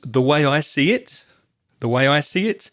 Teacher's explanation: very often when we're giving our opinion we tend to stress the pronoun so the pronoun here is I and it's very common to